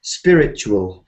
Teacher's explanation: I think native speakers have a kind of chew sound in these words.